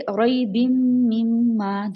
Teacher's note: دونوں میم پہ غنہ ہو رہا ہے، اس کے بعد الف کو ہم نے ڈراپ نہیں کرنا، مما نہیں کرنا، مما الف کو ہم نے ٹائم دینا ہے.